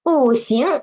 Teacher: So first rule is when Bu is in front of the first, second, and third tone, it will change nothing. It won't change. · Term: tone Sandy